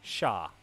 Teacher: Sha, okay, so there's no Y sound in there.